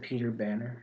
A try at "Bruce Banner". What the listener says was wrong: You said Bannon. Bruce Banner.